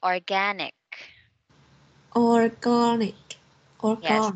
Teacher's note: the stress is in the second syllable